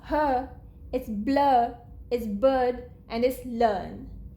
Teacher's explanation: We do not say R in British English when followed by a vowel unless the next letter after R is again a vowel, right?